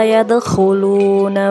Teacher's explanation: Huruf kho, makhrajnya di pangkal tenggorokan.